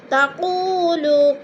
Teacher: تقولوا، قو پہ وہ مدہ ہے اور لو پہ بھی وہ مدہ ہے۔ وہ مدہ کو ہم نے 1 الف 2 حرکات کے برابر کھینچ کر پڑھنا ہے۔